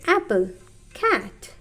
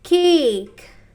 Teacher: here the sound of a is little bit stretched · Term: long sound